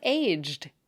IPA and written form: eʤəd (aged)